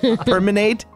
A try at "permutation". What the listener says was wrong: There's an N, but it's at the very end of the word. Permutation?